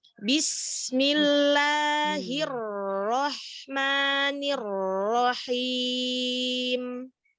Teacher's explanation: Huruf sinnya tidak cepat-cepat. Dialirkan dulu.